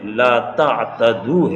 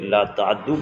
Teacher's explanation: لا تعتدو میں جو تا ہے اس کو دال سے بدل کر اور دال کا دال میں ادغام کر کے لا تعدو پڑھیں گے